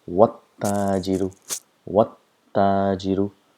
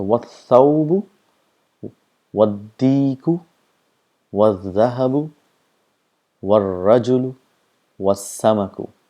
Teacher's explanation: the sound of alif is also not produced